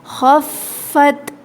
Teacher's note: خا کے اندر خرخراہٹ پائی جاتی ہے. ٹھیک ہے، ایسے آواز آتی ہے.